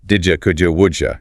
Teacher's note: So the core rule is that when a word ending in a dit sound is followed by you, the D and the Y sounds merge to create a J sound